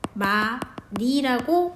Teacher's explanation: 많이는 히읗 탈락이 일어나는 거예요